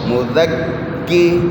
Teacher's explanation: ہاں آگے کاف کے اوپر شد ہیں تو اس کو زال سے جوڑیں گے. زال پہ زبان اوپر دانتوں کو لگائیں گے, سیٹی بند کریں گے.